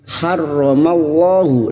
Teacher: lam jalalah yang sebelumnya fathah kita baca tafkhim